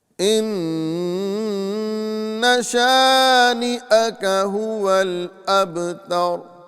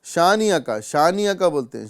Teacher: اکثر لوگ حمزہ کو درمیانے کلمے کے اندر حذف کر دیتے ہیں، یعنی حمزہ کی آواز نہیں نکال پاتے۔ شانیہ کا بولتے ہیں، شانیہ کا، تو یہاں پر حمزہ کی آواز نہیں نکلی۔